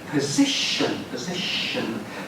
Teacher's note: so the ti is making a sh sound